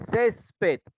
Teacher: en ces recae la mayor intensidad y se tilda porque termina en D. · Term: sílaba tónica